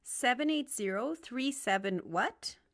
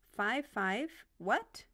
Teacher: the question word has the lowest pitch in the sentence and everything after it is rising